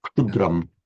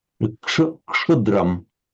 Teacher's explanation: Originally, the same phoneme as the Greek ksa. But in Sanskrit, pronounced as a ksha.